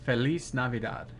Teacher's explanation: the word felice ends in a z but you're saying it almost like a a c or an s